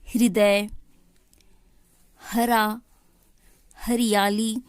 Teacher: षष्ठ, एक बार बोल कर देखिए, हमें यह पता लग जाएगा कि कहाँ से बोला जा रहा है इस वर्ण के स्थान को। ह, ह, ह जानने में हमें ज़्यादा परेशानी नहीं होती क्योंकि यह कंठ से है